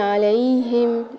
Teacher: علیہم میں عین کو حلق کے درمیانی حصے سے ادا کریں گے